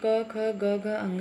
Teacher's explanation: यह 5 वर्ण जो है क वर्ग में आते हैं। इनका उच्चारण स्थान कंठ है। जो वायु मुख से निकलती है वो कंठ से होते हुए सीधे निकल जाती है।